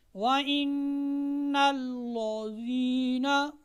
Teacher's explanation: देखिए मैंने लाम को मोटा कर दिया, मोटा नहीं करेंगे, कायदे तजवीद के अतबार से ये गलती गिनी जाएगी کیا ہے؟